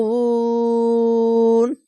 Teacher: তিন আলিফ টেনে থেমে যাবেন